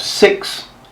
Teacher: In New Zealand, E has become I, so they have 6.